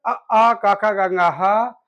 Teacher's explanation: अ क ख ग घ ह और विसर्ग का उच्चारण कंठ से